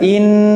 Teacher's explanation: in langsung tertutup karena lewat hidung saja. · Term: Nun tasydid